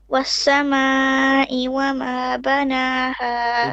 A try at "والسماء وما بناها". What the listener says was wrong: A bit longer.